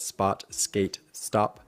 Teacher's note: You can practice not aspirating your p, t, k sounds by looking at those English words, spot, skate, stop